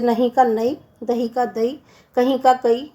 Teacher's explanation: बुंदेली में अधिकतर महाप्राण व्यंजनों का अल्प प्राणीकरण हो जाता है